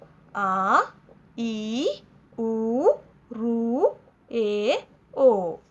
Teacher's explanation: దీర్ఘములు అంటే రెండు మాత్రా కాలంలో ఉచ్చరించేవి రెండు మాత్రాకాల సమయంలో విచ్చరించబడే వాటిని మనం దీర్ఘములు అంటారు అంటే రెండు సార్లు కనురెప్పపాటు సమయం రెండు సార్లు కనురెప్ప కొడితే ఎంత సమయం అవుతుందో అది రెండు రెండు మాత్రా కాలము అని అంటారు.